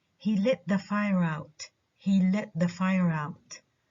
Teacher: the two stressed words are the verb let the noun fire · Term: adverb